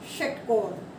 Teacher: तो यानी कि जब भी हमें ये वाला श का उच्चारण करना है तो प्रेशर जोर से लगाना है। जीभ हमारी तालू और दांत दोनों के बीच में टच करेगी और प्रेशर के साथ करेगी